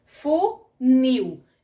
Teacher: Então, é como aqui, ó, funil. A gente percebe mais o nil do que o fu. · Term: oxítona